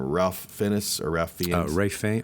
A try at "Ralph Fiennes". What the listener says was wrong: Ray Fiennes. doesn't look like that. I mean, it looks like Ralph Fiennes, but it's Ray Fiennes.